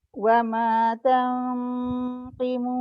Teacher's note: Permulaan tu je dia punya nun tu ke depan tapi sekejap sangat. Tengah tu dia dah ke belakang dah.